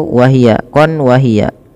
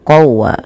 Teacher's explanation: Kemudian pada lafal syahiqan wa hiya, di sini ada bacaan idgham bi gunnah, yang dimana cara membacanya yaitu, teman-teman, masukkanlah bunyi suara tanwin pada lafal qon, ya, qon kepada waw, sehingga di situ wahia, qon wahia, maka dia berubah menjadi qawwa.